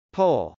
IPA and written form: pˈoʊl (poll)